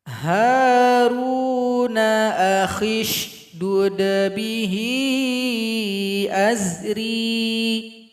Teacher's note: kha yang kasrah langsung masuk kepada huruf shin. Hamzah wasal yang polos diabaikan saja.